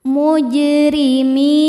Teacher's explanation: Huruf ro dibaca secara tarqiq karena berharokat kasrah, maka ro-nya tipis. · Huruf jim sukun dihukumi qalqalah sughra karena jim sukunnya sukun asli dan ada di tengah bacaan. Cara bacanya jim dipantulkan dengan pantulan yang kecil.